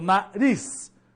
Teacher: Você não fala nariz, você fala nariz. A sílaba mais forte é ris, que seria a última sílaba. Então, nariz.